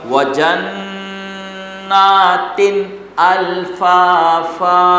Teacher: वजन्नातिन में जन्ना में गुन्ना होगा, तीन में गुन्ना नहीं होगा